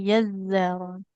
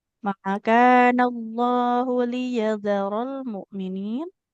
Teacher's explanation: Zalnya nggak bertasydid Ibu ya, nggak boleh ditekan.